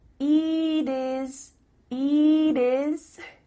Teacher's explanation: the final T is changing to a d